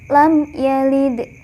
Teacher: Qolqolah Sugro atau kecil artinya bacaannya tidak terlalu keras pantulannya karena huruf Qalqalah berharakat sukun asli dan berada di tengah kalimat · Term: qalqalah sughra